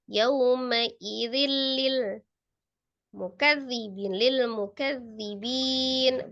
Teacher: Ma'idzil tanwin ketemu dengan lam. Idgham bila gunnah tasdid saja, jangan ditahan.